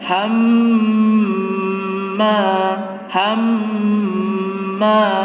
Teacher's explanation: Nah, di sini ada mim tasdid. Mim tasdid itu merupakan gunnah dan ini dipanjangkan.